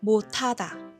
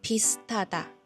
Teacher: 人仔咧黐住▁H▁音嘅時候咧，佢會變成▁T▁音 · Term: 有氣音法